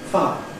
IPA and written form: faə (fire)